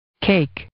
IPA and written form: keɪk (cake)